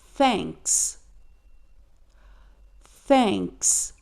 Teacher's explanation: Então perceba que para produzir o som do th, nós precisamos colocar a língua para fora, então nada de sentir vergonha, porque é assim mesmo que é pronunciado. A ponta da nossa língua fica para fora dos dentes e a gente vai empurrar o ar com a ponta da língua.